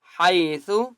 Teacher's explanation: ہا کی آواز حلق سے نکالیں گے